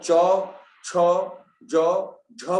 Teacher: अब चौ, छ, जौ, झ बोलो, उनकी ध्वनि देखो सबकी एक जैसी है, सब में जीभ बराबर लग रही है तालु में।